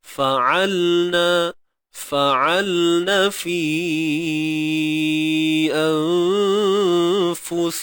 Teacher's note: Huruf lam. Sifat tawassut. Okay, suara yang tidak mengalir, suara yang tidak tertahan.